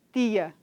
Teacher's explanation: nós não produzimos esse tch para dizer tia, nós dizemos tia, né?